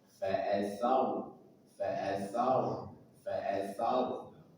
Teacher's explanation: rnya sukun sebelumnya fathah maka wajib dibaca tafkhim tebal